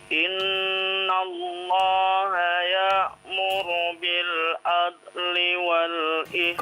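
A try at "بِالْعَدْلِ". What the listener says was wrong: Qalqalah huruf dalnya.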